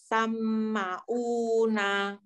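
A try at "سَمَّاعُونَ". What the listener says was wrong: Baik, pertama mim bertasydid harus ditekan.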